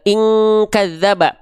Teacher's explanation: Kalau suaranya hilang berarti semua bertumpur suaranya di rongga hidung. Ing suaranya hilang, itulah dengungan menyerupai ang, dengungan yang kuat.